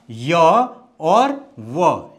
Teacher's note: अर्ध स्वर है ठीक है अर्ध स्वर इनको क्यों बोला क्योंकि इनके उच्चारण में ऐसा लगता है कि जैसे स्वर का उच्चारण हो रहा हो लेकिन स्वर तो ये है नहीं